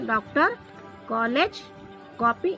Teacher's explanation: ओ का उच्चारण आ और ओ के मध्य की ध्वनि से होता है